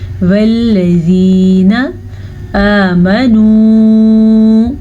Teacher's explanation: لام کبھی بھی پر نہیں پڑھا جاتا، نرمی کے ساتھ پڑھا جاتا ہے اور باریک پڑھا جاتا ہے